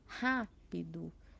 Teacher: ser paroxítona porque ela está na penúltima posição e por fim a palavra que a sílaba tônica é antepenúltima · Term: proparoxítona